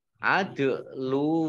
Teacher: dal sukun, bacaan qalqalah, ya, memantul.